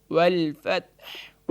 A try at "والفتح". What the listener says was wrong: یہاں اس کو لام کو موٹا نہیں کریں گے بلکہ یہاں بالکل لائٹ کر کے، کیونکہ اللہ کا نام نہیں ہے.